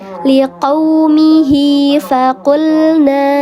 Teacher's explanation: fa dibaca panjang dua harakat, namanya mad silah qasirah karena dia tidak bertemu dengan hamzah di depannya.